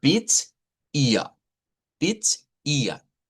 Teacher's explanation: I esta se convierte en una a media que explicábamos que es una a llevando como nuestra lengua a una posición acá al centro y no hacia el frente